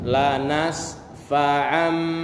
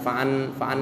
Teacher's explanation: nun mati bertemu dengan ba, seolah-olah nun mati berubah menjadi mim mati